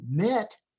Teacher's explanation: voicing let's look and then met is a stop but remember you let the air flow through the nose to create the additional nasalization on the stop